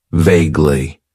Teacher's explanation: it has two syllables and the stress is on that first syllable